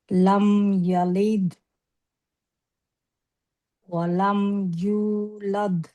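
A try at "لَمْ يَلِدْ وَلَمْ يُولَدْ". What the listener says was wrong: না? এখানে টান আছে।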